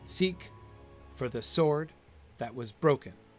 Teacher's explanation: Stress, unstressed, unstressed. Stress, unstressed, unstressed. Stressed, unstressed. Broken. Seek for the sword that was broken.